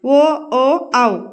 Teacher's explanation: కంఠ్యోష్ట్యాలు అంటే కంఠము పెదవులు తో పలికేవి